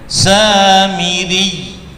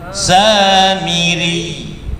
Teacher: Jadi seakan-akan ya-nya itu menjadi double, diunyut dia, pecah, ditarik kemudian dilepas, ya, tarik dilepas, diunyut.